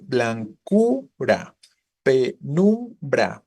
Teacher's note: ambas son palabras graves y su sonido fuerte empieza justo en la u